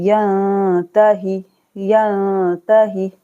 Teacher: इक्फा करना है। नून साकिन के बाद ता है तो यहाँ पर हम नून को छुपाएंगे